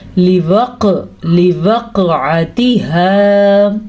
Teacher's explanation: قاف کے اوپر قلقلہ کا مطلب ہے قاف پہ جھٹکا پیدا ہوگا